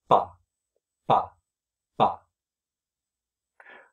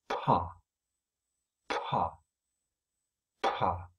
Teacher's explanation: I'm not dropping my jaw, I'm just letting the pressure blow my lips apart. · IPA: [pha]